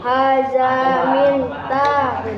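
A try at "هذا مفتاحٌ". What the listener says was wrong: Laisa min. Laisa min. Fa. Ada fa. Laisa nun. Miftahun.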